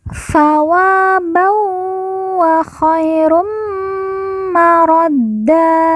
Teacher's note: ban bertemu dengan huruf wawu, maka tanwin dileburkan, langsung masuk huruf wawu, kemudian ditekan, ditahan 2 harokat dan didengungkan.